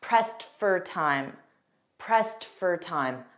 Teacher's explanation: And notice that pronunciation, pressed for time. So that for is going to be an unstressed fur. And pressed ends on a T, but it'll be very soft.